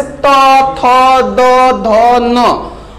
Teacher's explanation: त वर्ग जो होता है दंत होता है, यानी जीभ इसमें जाके दांत से टकराती है